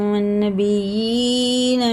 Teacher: नून में थोड़ा गुन्ना होता है जो शद होता है। और ये या साकिन से पहले ज़बर है तो ये हुर्फ़ लीन है और ये भी हुर्फ़ लीन है।